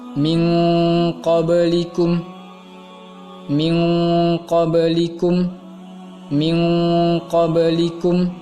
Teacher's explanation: Kalau ikhfa maka bunyinya akan berbunyi eng, hanya pada 2 huruf, yaitu qaf dengan kaf